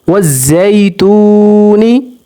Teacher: واو سے پہلے پیش ہے تو واو حروف مدہ ہے، واو کو 1 سیکنڈ تک لمبا بھی کریں گے